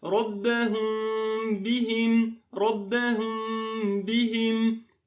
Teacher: The sound is Meem, but it's not completely clear. And Ba is clear with ghunnah, the nasal sound for 2 beats. · I'll hide Meem, making a little space between my lips, and I'll do ghunnah for 2 beats with a clear Ba next to it. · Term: Ikhfaa Shafawi, hidden Meem